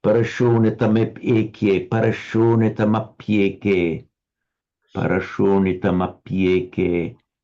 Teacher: this api is almost as an enclitic. It's felt to be closely joined to the previous word. So you want to try and do it with the flow.